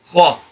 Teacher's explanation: The same articulation point as letter kha, where this letter kha is pronounced by lifting the back part of your tongue and firmly touching the back of the palate of the mouth, the soft part.